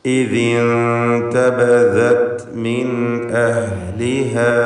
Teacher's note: ഇഖ്ഫാ ഹഖീഖി എന്ന ഹുക്മ നൽകി മറച്ചു മണിച്ചുകൊണ്ട് നൂനിനെ ഉച്ചരിക്കണം